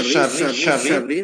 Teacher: Pastikan syinnya itu tafsir yaitu disebarkan semua udara di mulut. Jadi kayak kita ngusir ayam ya diusir ya.